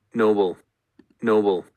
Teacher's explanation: So that's either an approximate or a bit of a fricativized bilabial fricative.